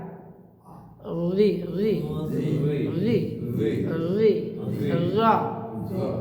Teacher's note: এবার জিব্বার আগে দাঁতের আগা লাগান